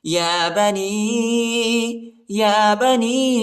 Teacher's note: یا پر جو ہے یا ساکنہ بھی ہے اور مد بھی آیا ہے، چھوٹا مد، اس کو تقریباً 2-3 سیکنڈ تک کھینچنا ہے